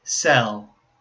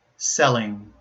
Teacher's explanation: the first one, sell, has the dark L sound, while the second one, selling, has the light L sound